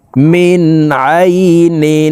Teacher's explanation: জের মিন নুন সাকিনের পরে ইজহারের হরফ আইন আসছে এই কারণে এই নুন সাকিনকে গুন্না ছাড়া স্পষ্ট করিয়া পড়বো